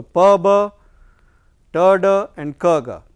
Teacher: Pa, ba is bilabial, ta, da is what you call alveolar, and ka and ga they are velar, because here the back part of the tongue is raised to the corresponding height to the soft palate.